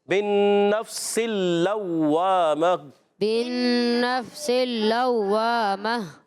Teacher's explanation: اور اوپر والے دانت ہوتے ہیں۔ سین کو لام سے ملائیں، لام مشدد ذرا رک کر ادا کریں گے ، لام کو واو سے ملائیں گے، واو مشدد رک کر